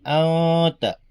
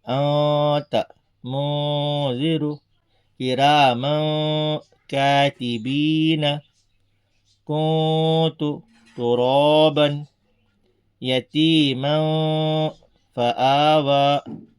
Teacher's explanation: ہم اس میں پوری طرح نون کی آواز کو ٹکائیں گے نہیں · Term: اخفا